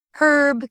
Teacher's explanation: Herb keeps the H sound in British English, unlike the silent H in American English. Adding the H makes the word feel sturdier.